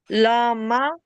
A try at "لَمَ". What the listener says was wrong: لاما کیوں؟ لام میم زبر لم پڑا نا. لام زبر مل ہوتا ہے. لم.